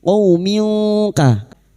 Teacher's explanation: kasrah tanwin bertemu kaf ikfa hakiki kita semarkan bunyi kasrah tanwin dan mendengung selama 3 harakat